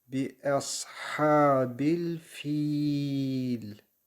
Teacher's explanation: Bu durumda uzatma harfinden sonra cezimi biz getirdiğimiz için burası meddi arıza olmuş oluyor. 4 saniye fi'yi uzatarak lem harfine bağlıyoruz. Yani bihabil fiil şeklinde.